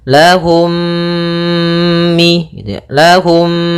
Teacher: mim yang pertama dimasukkan kepada mim kedua dan ditahan gunahnya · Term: idamimi, idgham mimi